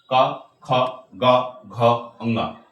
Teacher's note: इसको हम लोग कंठ से बोलते हैं। दोस्त याद रखना है कि जो क वर्ग है वो पांच के पांचों वर्ण कंठ से ही बोले जाएंगे